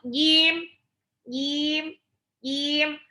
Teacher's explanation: huruf Jim itu letaknya di tengah lidah bertemu langit-langit atas dia sifatnya jahat-jahat itu tidak ada aliran udara tidak ada hembusan